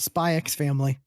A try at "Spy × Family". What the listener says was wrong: Spy Family. you don't pronounce the X. Most of those shows with the X, you don't pronounce the X.